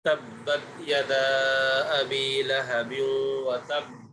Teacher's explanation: یہاں پر سختی کے ساتھ قلقلہ اس لیے کیا ہے کیونکہ یہاں پر تشدید بھی ہے، تو تشدید کا اظہار بھی ہو اور قلقلہ بھی ہو، تو تبت یدا ابی لہب وتب، آگے ما اغنى عنہ مالہ وما کسب۔